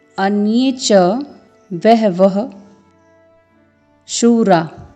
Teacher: श और र में दीर्घ स्वर है, तो आपको दुगना समय देना है शूरा के उच्चारण में।